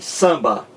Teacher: O M é apenas um sinal de nasalização da vogal anterior, dizendo que essa vogal ela é nasal e não oral.